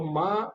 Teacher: होठों से होगा लेकिन उसके साथ नाक का भी प्रयोग होगा मां अगर आप नाक बंद कर दोगे तो मां नहीं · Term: पांचवा वर्ण